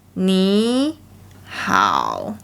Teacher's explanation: So the second character starts low. The pitch should be relatively low. So when you are practicing this phrase, you can focus more on the pitch height of the starting point of the third tone.